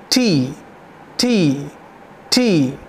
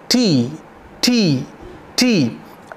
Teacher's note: तो जब आप बोलते हैं टी तो एक्स्ट्रा ब्रेथ है, यानी कि टी जो है वो वॉइसलेस है, इसमें हमको वोकल कॉर्ड की ज़रूरत नहीं होती, वो यहीं से हम साउंड कर सकते हैं, उस साउंड को यहीं क्रिएट कर सकते हैं।